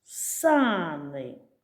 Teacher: наголос падає на перший голосний звук